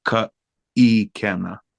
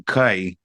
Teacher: that diacritical mark you see is a okina. So basically, it's a glottal stop